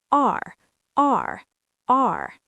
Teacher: your tongue curls back a little bit. The tip of your tongue goes toward the back of your mouth, but it doesn't touch the roof. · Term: American R